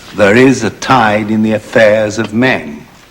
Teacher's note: this is a regular line except that there are only four strong stresses